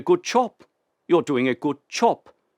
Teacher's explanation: The B turned into a p